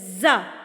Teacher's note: آپ کے دونوں دانت آپس میں جڑ جاتے ہیں اور زا مضبوطی سے پڑھا جاتا ہے